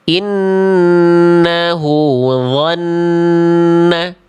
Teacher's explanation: dho tebal bukan karena memonyongkan mulut ketika fathah. Tapi karena mengangkat pangkal lidah, mulutnya cukup dibuka.